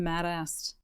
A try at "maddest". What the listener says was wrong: Mad-assed? You said maddest, but it sounded like mad-assed.